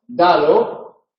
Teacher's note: Dado, la primera D es oclusiva. Dado, está totalmente cortado la salida del aire.